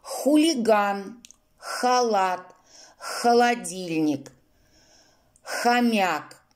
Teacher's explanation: Звук «х» – твердый согласный звук, глухой. На схеме обозначается синим квадратиком.